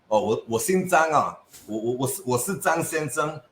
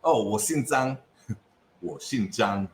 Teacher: The whole sh sound and xi sound. It's completely lost. Everything just becomes ssss.